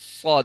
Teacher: زبان اندر ہو اور زبان کی جڑ اوپر تالو کے ساتھ لگی ہوئی ہو، اور پھر جو دانت ہے نا آپس میں دبا کے بند کر لیں۔